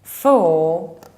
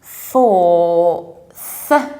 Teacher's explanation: you need to add this final th. So you say for, but fourth, with your tongue in between your teeth